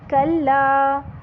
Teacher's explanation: کلا کا لا زبر لا جو ہے وہ 2 حرکت تک لمبا ہونا چاہیے